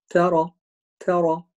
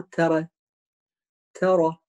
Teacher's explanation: هنا الراء تفخيم، تاء ترقيق، والراء فتحة تفخيم، يعني ترى ترى مو ترى ترى.